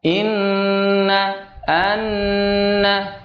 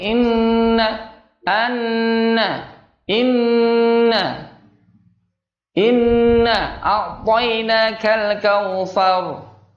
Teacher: Dengung itu ya suaranya cuma ada 1. Ada di ini pangkal hidung.